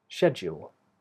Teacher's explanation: the stress of the word is on the first syllable, schedule. What's the schedule for today?